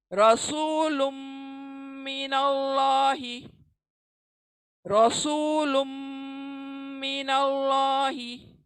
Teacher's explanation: लुन की नून को हम मीम में इदगाम कर देंगे और नाक की आवाज से पढ़ेंगे।